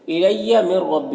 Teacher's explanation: نون ساکن کے بعد را ہے، حروف یرملون میں سے تو نون کو را سے ملا کر بغیر غنہ کے پڑھیں گے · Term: ادغام تام